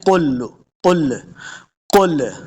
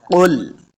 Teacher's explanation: لام حروف قلقلہ سے نہیں ہے تو لام کو ساکن کرنا ہے ، قل، بس لام ساکن ہو جائے گا، آواز ختم ہونی